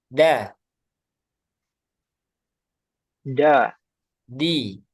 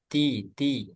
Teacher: kemudian dalnya jangan ada udara